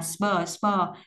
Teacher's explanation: âm bờ là âm bật nhưng đứng sau âm sờ và đứng trước nguyên âm thì nó sẽ thành âm cứng, âm bờ giống như con bò, con bê của tiếng Việt.